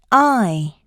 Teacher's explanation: Due to the mouth being open, the lips begin unrounded and apart and move into a retracted state, like a slight smile. The /aɪ/ is tense and long in duration. Tension should be felt in the jaw, lips, and tongue. · The I, like in the word I, is produced by rapidly moving the tongue from the back, low part of the mouth to the forward, high part of the mouth. The jaw begins in an open position, then rapidly moves to an almost closed position. · The I is tense and long in duration. Tension should be felt in the jaw, lips, and tongue, just like this. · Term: vowel sound I